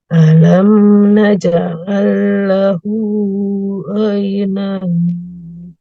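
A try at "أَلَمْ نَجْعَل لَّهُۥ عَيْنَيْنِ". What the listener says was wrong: Oke, lahunya 2 harokat saja di ayun. Alam naj'al lahu ainain.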